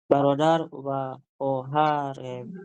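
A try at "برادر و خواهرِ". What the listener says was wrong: Balik pakai kasroh. Khohari. Iya, betul.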